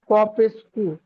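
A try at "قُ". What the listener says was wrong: কফ পেশ কু হবে না, লামেরও তাজদিদ আছে, কফটি লামের সাথে যুক্ত হবে, কফ লাম পেশ কুল।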